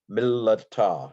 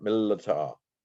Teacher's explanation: You would hear the second lamed if you were listening to a skilled Hebrew speaker. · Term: doubled lamed